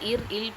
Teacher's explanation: மேல்வாயை நாவின் நுனி தடவ இல் பிறக்கும்